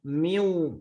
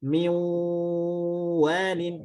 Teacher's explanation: ketika mi langsung digunnahkan, dalam kondisi gunnah tersebut si posisi mulut sudah dimonyongkan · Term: idgham